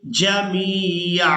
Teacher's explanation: वक़फ़ करेंगे तो वक़फ़ की सूरत में आइन पर एक ज़बर अदा करेंगे और इसको एक अलिफ मिक़दार खींचकर अदा करेंगे।